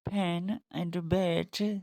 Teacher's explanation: There are two alveolar sounds. In the beginning of pen and bat, the mouth is closed by two lips. When the lips are closed, the air suddenly escapes from the mouth, making an explosive sound.